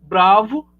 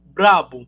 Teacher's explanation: o som V acabou adquirindo do som inicial B o traço, né, bilabial, porque o V ele é fricativo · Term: Assimilação